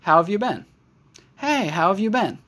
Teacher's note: We don't really hear the H in have.